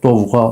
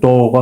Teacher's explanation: Yəni ov, öv birləşməsində artıq v samiti düşmür. Yəni doğa formasına keçmir.